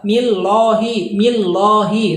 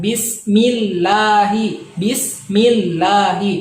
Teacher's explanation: millahi tidak boleh dibaca tebal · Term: tarkik